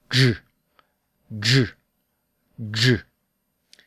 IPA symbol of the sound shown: dʒ